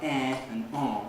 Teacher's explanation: We don't use nasalized vowels like eh and on, but lots of languages do.